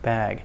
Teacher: we make the vowel a tiny bit longer than usual as a kind of a clue that there's a voiced sound at the end